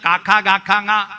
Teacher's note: തൊണ്ടയിൽ ഒച്ച തടഞ്ഞു വരുന്ന